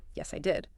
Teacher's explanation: I'll use two distinct thought groups, each ending with the falling tone for certainty.